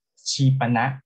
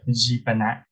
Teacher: we have voiceless Ch, we have a voiceless affricate Ch sound